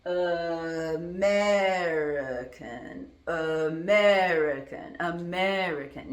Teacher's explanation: the other syllables, those vowels inside those syllables, I'm pronouncing as a schwa